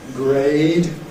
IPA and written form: greɪd (grade)